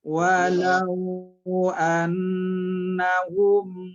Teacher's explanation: berdengung, dengungnya setimbangan atau sekira-kira 2 harkat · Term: gunnah